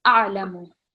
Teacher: no prolonging the lam or the meme because it's just fatha and it's just dhamma, so just 1 second each